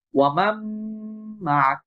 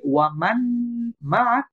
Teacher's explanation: একই ভাবে ওয়ামাম মাক, এটা যদি আমি বলি ওয়ামান মাক, এটা ভুল হবে, কারণ এখানে ইদগাম হয়েছে, নুনটা মিমের সাথে যুক্ত হয়ে গেছে